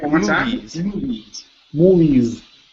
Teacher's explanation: give me a good long e sound at the end